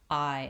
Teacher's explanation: it actually says the diphthong I so it's two vowels it glides from the AH to the if I I and